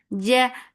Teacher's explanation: Ja, the makhraj of jim is when you are pasting your tongue on the middle part of your tongue is pasted on the middle part of your upper palate